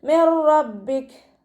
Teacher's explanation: നൂൻ സാക്കിനയ്ക്ക് ശേഷം ഇദ്ഗാം ബിലാ ഗുന്നയുടെ അക്ഷരമായിട്ടുള്ള റോ വന്നിട്ടുണ്ട്. നൂൻ സാക്കിനയെ റോയിലേക്ക് ലയിപ്പിക്കുന്നുണ്ട്, പക്ഷേ ഉന്ന കൊടുക്കാതെ ഓതാൻ ശ്രദ്ധിക്കുക കേട്ടോ. മിർ റബ്ബിക് മിർ റബ്ബിക് എന്ന് പറഞ്ഞിട്ട് അവിടെ ഓതരുത്.